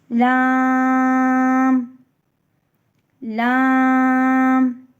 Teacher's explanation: زبان کی کروٹ کے آخر سے زبان کی نوک تک کے حصے سے جب وہ اوپر کے اگلے 4 دانتوں کے مسوڑوں سے لگے تو لام پڑھا جاتا ہے۔ لام بھی 6 حرفی لفظ ہے، اس کو بھی ہم کھینچ کے پڑھتے ہیں۔